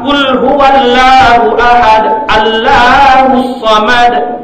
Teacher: Lafzul jalalah itulah yang dibaca dengan lam tadlis, lam dibaca dengan tafkhim, lam dibaca dengan tebal.